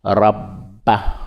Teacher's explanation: on dit rabba, on roule le R